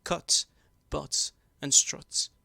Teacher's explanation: southern english the earth sound was split into two distinct phonemes the vowel first unrounded and then lowered to become the open mid back · The vowel first unrounded and then lowered to become the open mid-back in some words such as cut, but, and strut.